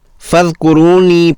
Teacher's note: ذال کو بغیر ہلائے بغیر ارتعاش کے فذکرونی پڑھنا درست عمل ہے